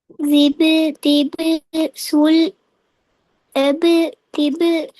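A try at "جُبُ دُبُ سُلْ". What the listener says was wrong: ஜி அல்ல. ஜி என்று சொன்னா என்ன செய்யணும்?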